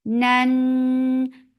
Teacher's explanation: Nan, fatha, open jaws, attach it. Noon will get sifa of kunna, and kunna is this kunna is akmal, so keep the sound in your nose for a longer time.